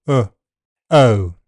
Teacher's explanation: The first part of the diphthong is unrounded, and the second part can be slightly rounded, or unrounded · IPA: /əʊ/